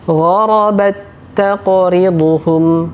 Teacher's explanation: huruf ta pertama dimasukkan ke huruf ta yang kedua, sehingga huruf ta yang pertama tidak lagi dibaca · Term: idgham